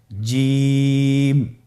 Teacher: এর মাখরাজ হলো জিহ্বার মধ্যখান তার বরাবর উপরের তালুর সঙ্গে লাগিয়ে উচ্চারিত হয় আপনারা পিকচারে ছবিতে দেখতে পাচ্ছেন যে জিহ্বার মধ্যখান তার বরাবর উপরে তালের সঙ্গে লাগিয়ে উচ্চারণ করতে হয়।